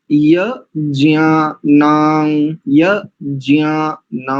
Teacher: या अक्षर को नासिका से नहीं बोलना ज अक्षर को नासिका से बोलना